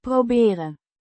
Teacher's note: pronounced Proh-beh-ren. with emphasis on the first syllable